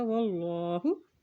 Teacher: اللہ کے نام سے پہلے زبر ہے تو اللہ کا نام یہاں پر موٹا ادا کیا جائے گا